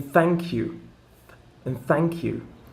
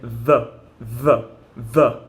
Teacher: we have a softer sound like in thank you and thank you and you have a more of a kind of a vibrating sound in the though